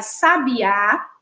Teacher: Quando a gente observa aí sabiá, né? A gente observa que a sílaba tônica, o A, com um acento agudo, ela está localizada aí, ó, como última sílaba. Então, essa palavra é uma palavra oxítona.